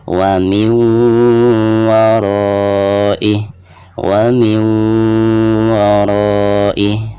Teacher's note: selain memasukkan nun sukun ke huruf wawu, itu harus ada gunahnya. Jadi ditahan dulu ya, 2 atau 3 harokat. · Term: idgham bigunah